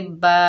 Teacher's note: बा के ऊपर ज़बर है, आगे अलिफ खाली है, ये अलिफ मद्दा है, एक अलिफ की मिकदार खींच कर पढ़ेंगे बा